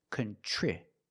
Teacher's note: TR makes the ch sound like chicken, plus the R together, contri. The I after TR is a short I, so we make the sound I like this is.